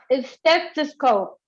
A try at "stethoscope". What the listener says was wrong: Yes, but don't add it. Remember, no E. There's no E there. So stethoscope.